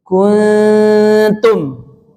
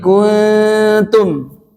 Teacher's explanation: Bunyi dengungnya dekatkan ke area dekat gigi seri tumbuh. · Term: ikhfa